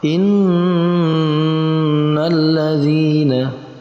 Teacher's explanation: Maka harus dibaca dengan menengungkan bacaan nun bertasydid tadi dengan panjang 2 harokat. Innal ladzina, kita dengungkan selama 2 ketukan atau 2 harokat. Itu yang dinamakan gunnah musyaddadah.